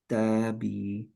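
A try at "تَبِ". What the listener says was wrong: বিতে স্লাইটলি একটু বেশি টান হয়ে গেছে ভাইয়া, হ্যাঁ? তাবি।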